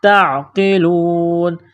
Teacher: تا کو عین کے ساتھ پلس کرنا ہے، قاف کو موٹا کرنا ہے